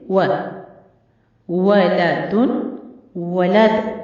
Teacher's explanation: वाव भी दोनों होंठों को गोल करने से अदा होती है, इसलिए आपकी होंठ मुकम्मल तौर पर दोनों गोल होने चाहिए वाव की अदायगी के वक्त।